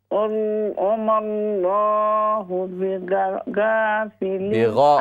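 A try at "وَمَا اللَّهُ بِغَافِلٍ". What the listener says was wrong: غین کے ساتھ الف کو بھی فل ماؤتھ سے پڑھیں. وما اللہ بغافل،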